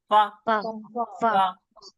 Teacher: ऊपर के दांत और नीचे के होठ के गीले हिस्से से होता है · जो ऊपर के जो दांत होते हैं उनके किनारे और नीचे के होंठ का गीला हिस्सा अंदर की तरफ लगता है हमारा फा, ठीक है। गीले हिस्से से फा अदा होता है।